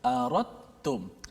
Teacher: Daripada ra terus masuk ta. Kerana dal itu diidghamkan ke dalam ta. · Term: idgham mutajanisain